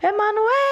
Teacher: A sílaba que se estendeu foi é. Essa era a sílaba tônica. A sílaba tônica é a mais forte porque aqui se estende, é a que segura a força da palavra.